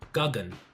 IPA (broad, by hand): ˈgagən